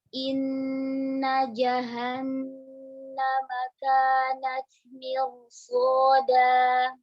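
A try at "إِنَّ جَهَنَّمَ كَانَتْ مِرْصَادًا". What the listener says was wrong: Ya, sekali lagi taknya syiddahnya kuatkan dulu. Di taknya.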